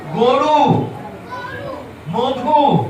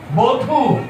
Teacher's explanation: অ এর পরে হ্রস্ব উকার, দীর্ঘ উকার থাকলে অ ও এর মতো হয়ে যায়।